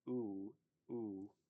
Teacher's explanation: your oo has a W at the end